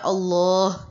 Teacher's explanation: یہی وجہ ہے کہ ہمیں ہا کی آواز سینے کے پاس سے نکلتی ہوئی محسوس ہوتی ہے۔ جب ہم بولتے ہیں اللہ تو ہا ہمیں نکلتا ہوا محسوس ہوتا ہے۔ · ہا جو ہے اقصی حلق سے نکل رہا ہے۔ حلق کا نیچے والا حصہ جہاں پر آپ کا حلق ختم ہوتا ہے اور سینے سے ملتا ہے، یہ سینے کے قریب کا پوائنٹ ہے۔